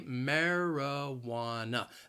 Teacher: the word has four syllables and the stress is on that third syllable · That second and fourth syllable, you hear that schwa